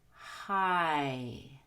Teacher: It consists of two different parts. It starts with the short O, ah, and ends with the long E, as in high. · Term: long I